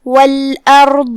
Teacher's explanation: کلمت والارض میں یہاں جو کہ را پہ جزم ہے لیکن اس سے پہلے والے حرف پہ مطلب الف پہ زبر ہے، لہذا را کو تفخیم سے ہم ادا کریں گے مطلب بھاری آواز میں